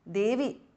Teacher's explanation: the E in the end is short, it is in Sambodhana Vibhakti